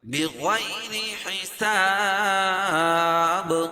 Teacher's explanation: وقف کی صورت میں با کے اوپر قلقلہ کریں گے، کیوں؟ اس لیے کہ وقف کی صورت میں با کے اوپر جزم لے کر آئیں گے، اور با کے اوپر جزم لے کر آئیں گے، اور یہ با حروف قلقلہ کے 5 حرفوں میں سے قاف، طا، با، جیم اور دال.